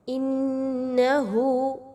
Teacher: نون مشدد کا غنہ ہے، غنہ ناک میں آواز کو لے کے جائیں گے